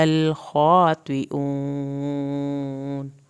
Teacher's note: الا الخاطئون خا کو پورا پڑھنا ہے، طوا ادھر پورا ہوگا، طیئون واو ساکن کو کھینچ کے اور نون کو نہیں ہلانا